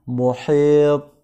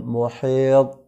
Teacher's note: Jadi huruf qalqalah itu ada 5, yakni ba, jim, dal, to, dan qaf. Nah, dibaca sebagai qalqalah artinya adalah bacaan yang mantul, dan dibaca seperti itu manakala huruf yang 5 tadi adalah berharokat sukun atau berada pada waqaf ya, atau pemberhentian.